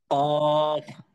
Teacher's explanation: জিহ্বার গোড়া তার বরাবর উপরের তালুর সঙ্গে লাগাইয়া উচ্চারিত হয় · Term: চার নম্বর মাখরাজ